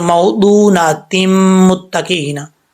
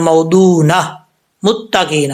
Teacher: میم کے اوپر جو پیش ہے وہ پڑھا جائے گا لیکن شد نہیں پڑھی جائے گی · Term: وقف